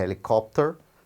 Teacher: O H é sonoro.